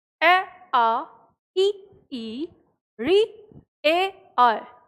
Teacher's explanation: तो जब आप इनका उच्चारण करते हैं तो आपको अपने आप ये चीज़ समझ में आती है कि हमारे होठ जो हैं वो फैले हुए होते हैं, गोलाकार नहीं होते। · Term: आवृतमुखी